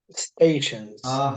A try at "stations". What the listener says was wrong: It is stations. You said situations.